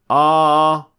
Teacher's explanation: opening uh not too narrow uh or too wide ah importantly the tongue is completely relaxed and doing absolutely nothing